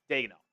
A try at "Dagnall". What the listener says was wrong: There's no E. Dagnall.